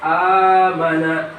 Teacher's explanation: mad badal, yaitu hamzah bertemu huruf mad dan huruf mad menjadi pengganti hamzah